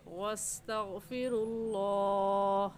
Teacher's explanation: واستغفر اللہ میں لفظ اللہ سے پہلے پیش ہے، اس لیے لفظ اللہ کو پوری یعنی موٹا کر کے پڑھیں گے